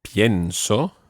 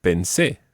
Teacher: The stress on the present tense is on the IE, and the stress when it's in the preterite is on the last syllable.